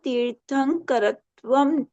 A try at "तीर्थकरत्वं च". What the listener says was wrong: तीर्थकरत्वम, तीर्थंकर नहीं है, तीर्थकरत्वम च। तीर्थकरत्वम है, अनुस्वार नहीं चाहिए।